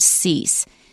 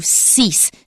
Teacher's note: Now, I've warned you that S is often pronounced as Z. But not in this word. It is still s.